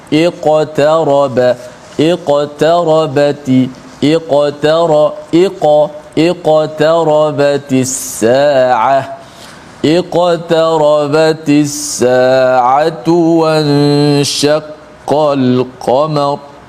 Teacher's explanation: ada qaf mati di tengah-tengah kalimah ataupun ayat ini, maka dibaca dengan qalqalah yang sughra, yang paling martabat yang paling rendah sekali. Walau bagaimanapun huruf qaf ni huruf yang kuat, maka dibunyikan sesuai dengan huruf qaf.